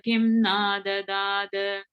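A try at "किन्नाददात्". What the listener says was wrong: Sorry, Kinna, it's both of them are a na at the end. Kinna Dadat. Kinna Dadat. So the way this is the Kim, it's three words. Kim na adadat, three words, okay. But because that na is coming in the middle, the im becomes a in, so it becomes kin na dadat. So it's a double na there.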